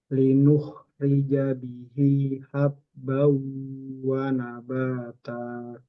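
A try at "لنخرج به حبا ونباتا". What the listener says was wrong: Bukan roi tapi ri. Linuh rijabi ri.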